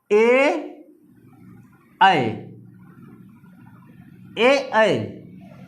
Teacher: अ plus बड़ी ई मिलकर ए का निर्माण करते हैं। अ हमारा कंठवर्ण में आएगा, कंठ में, और ई जो है तालु में आएगा। दोनों को मिलाकर कंठ तालव्य बना, कंठ तालव्य बना।